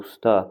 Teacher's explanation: U qalın qapalı dodaqlanan a qalın açıq dodaqlanmayan saitdir.